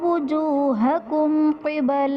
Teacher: وجوہکم قبل میں میم ساکن کے بعد حرف با اور میم کے علاوہ قاف آ رہا ہے تو یہاں پر اظہار شفوی کا قاعدہ ہوگا یعنی میم ساکن میں غنہ نہیں کریں گے